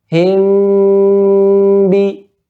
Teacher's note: gunnah pada mim itu dipanjangkan gunnahnya